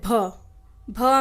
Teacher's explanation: भ में सांस निकल रहा है बाहर